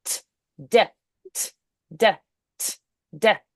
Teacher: So the T and the D, they make a brief contact with that alveolar ridge, quickly releasing the air to pass through. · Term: alveolar sounds